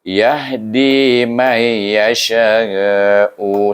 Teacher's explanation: huruf mad alif bertemu dengan hamzah dalam satu kalimah. Maka kita guna hukum mad wajib muttasil yang dibaca 4 atau 5 harakah.